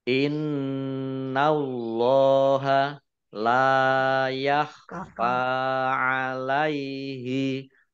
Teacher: nun tasdid ya, dibaca mendengung, ditahan 2 harokat. · Allahnya dibaca tebal karena harokat di depannya fathah.